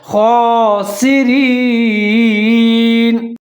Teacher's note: خا کو ظاہر کر کے پڑھنا ہے اور اس کے اوپر کھڑا زبر ہے، ایک الف کے برابر لمبا کر کے پڑھنا ہے